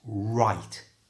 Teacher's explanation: make sure you get a good British R Sound by pushing your lips forward all the sound is made with your lips so it's right